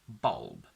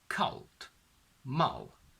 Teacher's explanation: In this case, I really don't want you to aim for a bright a, because that's not the sound that we produce. The dark L interferes so much that it turns it into a sort of o